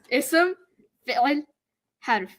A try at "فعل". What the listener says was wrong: Fi'il. You're like choking yourself too much.